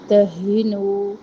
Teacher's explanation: ہا اقصی حلق سے ادا ہوتی ہے